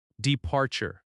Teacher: Departure. Stress on the second syllable.